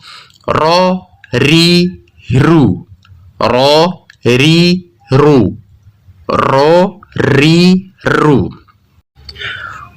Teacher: ujung lidah beserta dengan punggungnya bertemu dengan gusi atas dan tentunya menimbulkan cela dari celah inilah mengalir sebagian suara ro jika tidak ada celah ini maka makhrajnya akan tertutup dengan sempurna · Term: huruf ro